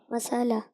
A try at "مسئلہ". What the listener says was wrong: مسالہ. اچھا جی، یعنی سین پہ زبر ڈال رہے ہیں آپ.